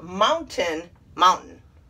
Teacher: we miss the t but really it should be pronounced mountain